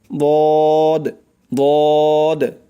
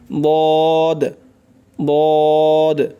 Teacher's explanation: জিহ্বার গোড়ার কিনারা উপরের মাড়ির দাঁতের গোড়ার সঙ্গে লাগাইয়া উচ্চারণ হয়